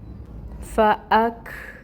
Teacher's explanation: کاف ساکن ہے، ڈنڈے والی کاف ہے، اس کے اندر بھی ہمس ہوتی ہے